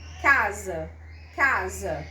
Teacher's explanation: A vogal A da primeira sílaba, que é tônica, é mais forte, né? Mais vozeada, tem um grau de vozeamento maior do que a átona final. Casa, casa, é mais fraca, né?